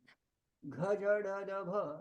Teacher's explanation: They are mahapraniya plus samvar, nada, ghosh.